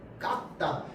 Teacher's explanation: 이 깎다 같은 경우는 쌍기역이 기역으로 변하고 기역이 디귿에게 영향을 준 겁니다. 자, 그래서 교체 현상이 이 두 번 일어납니다.